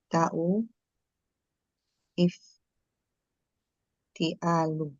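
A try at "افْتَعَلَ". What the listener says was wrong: ta'ala jangan dibaca ifti. Ifta, ifta'ala jangan ifti.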